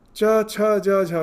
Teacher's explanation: the middle of your tongue is touching the upper jaw. Is the upper jaw, it is touching.